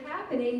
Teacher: in the word happening the accent is on the first syllable